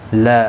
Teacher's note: الف مدہ ہے، ایک الف کی مقدار کے برابر کھینچ کر پڑھیں گے